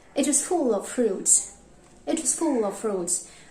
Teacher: Say it together and fruits may be louder.